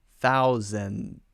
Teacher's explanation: for the D we don't release it out we hold it with the tongue